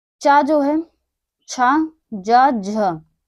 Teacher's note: ये 4 हमारे जो हैं वो तालु से उच्चारित होते हैं